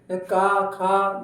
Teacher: गले के सबसे पिछले भाग से आवाज आ रही है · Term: कंठस्थ